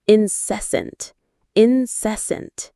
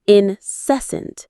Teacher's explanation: The stress is on the second syllable, cess.